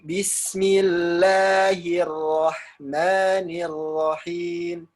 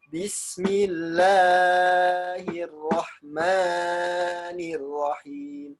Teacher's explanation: Ketika bismillah panjangnya lafzul jalalah, nah, itu cuma 2 harokat ya, harokatain, mat tabi'i.